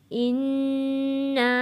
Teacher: नून के ऊपर तशदीद है, गुन्ना अदा करके यहाँ पे मद भी है, फिर हमने इसको खींच कर पढ़ना है।